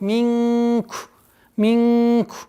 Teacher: Ихфа в размере двух огласовок